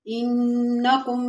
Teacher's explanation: انکم میں نون مشدد ہے، تھوڑا سا غنہ کریں گے اور کم کے بعد اظہار ہوگا۔